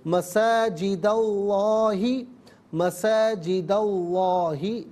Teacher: ملا کر پڑھنے کی صورت میں مساجد میں دال پر زبر ہے، اسے لفظ اللہ کی لام کے ساتھ ملائیں گے، درمیان سے حمزہ یعنی الف کو حذف کیا جائے گا۔ لفظ اللہ کی لام سے پہلے والے حرف دال پر زبر ہے تو لفظ اللہ کی لام کو پر کر کے پڑھیں گے